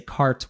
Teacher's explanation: most Americans would say cart with that strong rhotic R